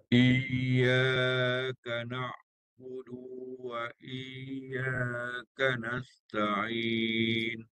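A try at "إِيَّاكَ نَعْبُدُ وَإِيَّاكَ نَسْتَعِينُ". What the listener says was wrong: Okey, dah ada dengar tapi dia samar. Dia panggil namanya samar. Ya mati. Itu istilah dia lah. Kalau nak jelas lagi, naik lagi sampai atas lagi. Okey, apa pun ada nampak ya tu bunyi dia mati tu ada.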